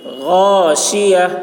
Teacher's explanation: غین کو حلق سے ادا کریں گے، اس کی آواز موٹی ہوگی. شین کی آواز سخت ہوگی.